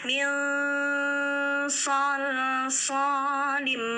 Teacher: Ikhfa itu berdengung samar ya, jadi bukan min tapi siapkan ke sode.